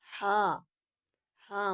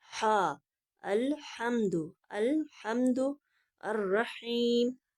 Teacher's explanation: ہا موٹا کر کے حلق کے بالکل سینٹر سے آواز نکلے گی